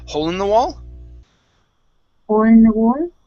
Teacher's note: i start moving at the very beginning i start going up with my tone